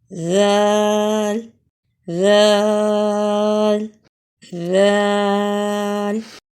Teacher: زبان کی نوک جب سامنے اوپر کے 2 دانتوں کے کنارے سے لگے تو ذال ادا ہوتا ہے